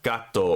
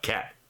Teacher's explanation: And then right below that is a visual uh like representation of the tongue reaching back. So like the back of the tongue reaching back to touch the soft part of the roof of the mouth